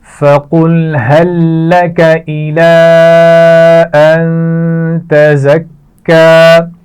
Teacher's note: أن تزكى نون پر غنہ کیا جائے گا, زا کو سختی سے پڑھا جائے گا اور کاف پر شد ہے تو اس کو بھی سختی سے ادا کیا جائے گا · هل لَكَ یہ دونوں الفاظ ملا کر پڑھے جائیں گے